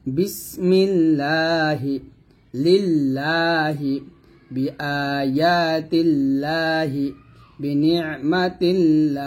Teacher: আল্লাহ শব্দের লাম এর ডানে জের হলে আল্লাহ শব্দের লামকে চেকন করে পড়তে হয় বা পাতলা করে বা বারিক করে পড়তে হয়